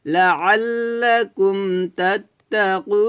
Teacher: আর মদ্দে আরজি 3 আলিফ টেনে পড়তে হয়।